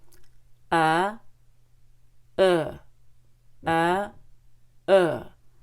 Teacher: it's on the path between short U and long u so we have a uh you pull back a lot for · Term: Short back U